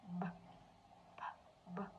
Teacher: Our vocal cord variates when we pronounce the b sound.